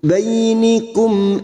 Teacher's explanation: Ya Sukun kita lunakkan baininikum mim sukun bertemu Hamzah Idhar syafawi mim sukun dibaca jelas tanpa mendengung